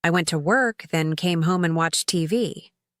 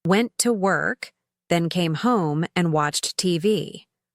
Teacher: The little words like I and and flow quickly between the important words. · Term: rhythm and stress patterns